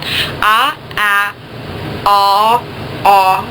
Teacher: So you've got ah at the very back of your mouth, ah at the very front, ah is in the middle, and one other big difference, you round your lips. Okay, so you got ah, ah, aw, aw with rounded lips.